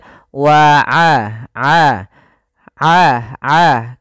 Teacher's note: Dan hati-hati jangan sampai masuk kepada rongga hidung, jangan wa a, tapi dia wa a. Kalau kita pencet hidung kita, itu suaranya tetap mengalir dan tidak berdengung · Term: sifat ainnya